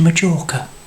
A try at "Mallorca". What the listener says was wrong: It's Mallorca, not Majorca. You pronounce the J with a Y.